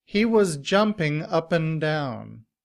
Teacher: However, in reduced form, and is pronounced un. And combined with up, it sounds like upp'n.